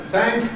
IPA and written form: θæŋk (thank)